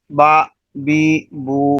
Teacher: حرکت کو لمبا نہیں کرنا، کھینچنا نہیں ہوتا، مجہول بھی نہیں پڑھنا بلکہ معروف پڑھنا ہے